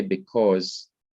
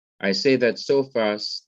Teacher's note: notice i say because so fast that you can hardly even hear the e in the word